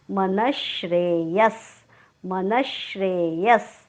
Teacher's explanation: विसर्गाच्या पुढे आलेला आहे श्र. विसर्गाच्या पुढे जेव्हा श येतो तेव्हा विसर्गाचा उच्चार आपण हलंत श करतो